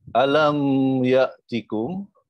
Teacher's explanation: mim mati berjumpa dengan ya, izhar syafawi, disebutkan huruf mim dengan jelas.